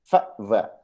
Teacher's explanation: f, v are labiodental sounds क्योंकि upper teeth touch lower lip, so this makes it labiodental